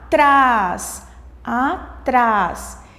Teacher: a sílaba forte a sílaba tônica de atrás é o trás